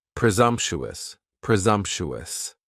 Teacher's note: Next is presumptuous, and presumptuous has 4 syllables, and the stress is on that second syllable, and the S almost sounds a little more like a Z